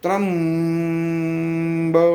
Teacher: त्र आणि बच्या मध्ये म आला.